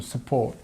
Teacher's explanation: the stress is on the second part of the word